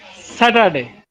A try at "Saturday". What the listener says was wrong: In Saturday there is no ka sound.